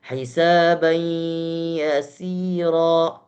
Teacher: Ya, harus idgham. Maka ada pertengahan suara keluar dari hidung dan keluar dari mulut. · Kita bisa merasakan ketika membacakan ada dengung, ya, yang keluar daripada hidung. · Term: idgham bi gunnah